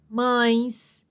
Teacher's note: os ditongos nasais pronunciados pelo nariz